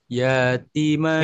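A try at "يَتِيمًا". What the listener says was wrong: Salah salah. Yanya pendek.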